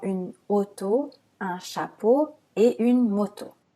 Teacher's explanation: AU et EAU sont des sons O fermés